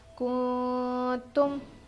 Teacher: ابھی دیکھیے یہاں پر نون ساکن کے بعد حرف اخفا میں سے تا ہے، اسی لیے ہم نون کی آواز کو ناک میں چھپا کر پڑھیں گے